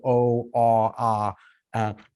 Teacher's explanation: And by contrast, your back vowels, that's your o, ah, your tongue is way sort of in the back of the mouth, and the front of the mouth is all open. There's lots of space in there.